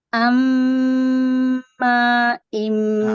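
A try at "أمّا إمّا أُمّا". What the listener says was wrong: Ma-nya kepanjangan. Ma-nya kepanjangan.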